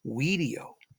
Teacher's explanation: video is how the ancient Romans would have pronounced the V. So the V would have sounded like a W. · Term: W sound